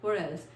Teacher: जब टी हमारा दो वॉवल्स के बीच में आता है तो उसे हम लोगों ने टी प्रोनाउंस नहीं करते, उसे हम लोग डी प्रोनाउंस करते हैं